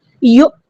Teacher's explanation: ول نہیں کہنا، ول. یو، حمزہ ساکن کی آواز واضح جھٹکے سے آنی چاہیے